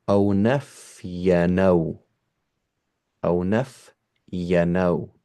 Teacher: I'm going to take the haraka of the O and put it on the noon.